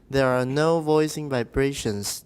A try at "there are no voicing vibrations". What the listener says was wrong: Okay, vibrations is important, but it is actually a compound noun, so there are no voicing vibrations.